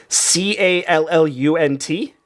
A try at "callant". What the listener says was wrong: Oh, close. A-N-T. You got an "an" at the end, not a "unt."